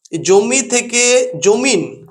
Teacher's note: সর্বশেষে একটি ব্যঞ্জন ধ্বনির আগমন ঘটলো দন্তন্য ব্যঞ্জন ধ্বনির আগমন ঘটেছে একেই বলা হয় অন্ত ব্যঞ্জন ধ্বনি আগম একে আমরা বলছি অন্ত